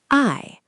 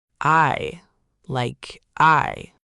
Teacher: It's your ah gliding into your e. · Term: compound finals